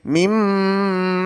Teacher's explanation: Nun sukun bertemu mim, dimasukkan juga didengungkan. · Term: idgham bi gunnah